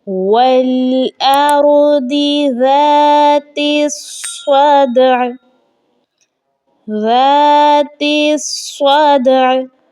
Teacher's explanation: دال ہے یہ حروف قلقلہ میں سے ہے، خوب ظاہر کیا جائے گا، اور عین کو بھی اپنی وائس کے ذریعے سے ہم نے ہلکا سا ظاہر کرنا ہے. · زال کے بعد والے الف کو بھی نہیں پڑھا جائے گا. تا کو صاد کے ساتھ ملا کے پڑھا جائے گا، اس لیے صاد کے مشدد لفظ ہے.